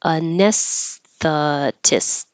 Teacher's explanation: You're going from behind the teeth to between to back behind for the T.